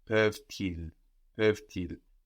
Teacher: You only hear that last consonant, and we hear it because it's sticking on to the next word. It's not on the end of the syllable anymore. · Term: liaison